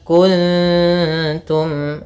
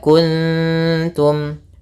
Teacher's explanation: Artinya kita membaca nunnya kesamarkan ke huruf ta langsung kepada makhraj daripada huruf ta Yang mana makhrajnya adalah ke ujung e dekat gigi Maaf gusi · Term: ikhfa